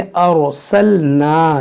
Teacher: रा साकिन से पहले ज़बर है, इस रा को मोटा पढ़ेंगे, इसको पढ़ेंगे अर्सलना।